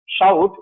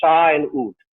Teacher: when we say ow, for instance, we say shout, we don't say sha and oot. It's a single sound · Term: Diphthongs